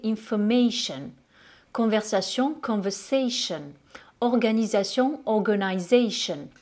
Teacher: en anglais, il ne va pas se prononcer se, ni te, mais il va se prononcer ch. Donc là, j'ai réalisé aussi une vidéo sur toutes les lettres qui font le son ch.